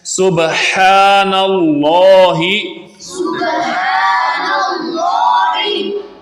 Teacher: تو اس کو سبحان اللہ ہا کے ساتھ نہیں پڑھنا بلکہ ہا کے ساتھ پڑھنا ہے، اور با پہ قلقلہ کرنا ہے، اور اللہ کے لام سے پہلے نون پر زبر ہے تو اس کو بھاری یعنی پر آواز میں پڑھنا ہے۔